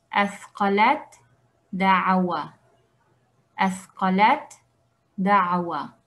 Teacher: Ta y dal tienen un punto de articulación muy cercano. Vamos a decir azqalat da'awa, azqalat da'awa, como si estuviera escrito de esta forma, ¿okay?